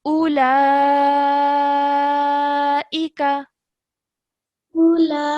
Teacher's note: that's the longer type of mud. So you have to elongate for about 4 to 6 seconds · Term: madul kabir